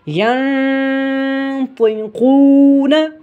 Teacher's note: طا کو اور قاف کو موٹا کر کے پڑھا جائے گا کیونکہ حروف مستعلیہ میں سے ہے